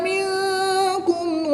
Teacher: نون ساکن کے بعد کاف حروف اخفا میں سے ہے تو یہاں پر اخفا ہوگا یعنی غنہ زمانی کر کے پڑھیں گے۔